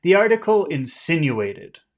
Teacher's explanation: we'll start high because phrases normally start high.